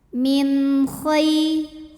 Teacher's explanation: Wa ma taf'alu min, ada hukum izhar halqi karena nun sukun menghadapi huruf halqi atau huruf tenggorokan yaitu kha, maka nun sukun dibaca jelas. · ada huruf lin sebab ya sukun didahului baris fathah. Cara bacanya dilembutkan.